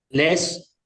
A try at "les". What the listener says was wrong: bien, pero es simplemente una cosa, que la S final no se pronuncia. entonces, ¿cómo vamos a diferenciar? Por escrito es fácil, obviamente, pero en oral ahí se complica. Hemos dicho que le, como un pececito, es singular.